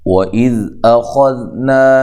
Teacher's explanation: ذال کو نرم ادا کرنا ہے، ہلانا نہیں